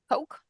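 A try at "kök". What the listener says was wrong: It's choke because the Swedish K is pronounced as like a CH.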